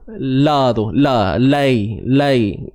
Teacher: Jadi sebenarnya lam tu dah dimasukkan dalam lam yang pada kalimah laili tu.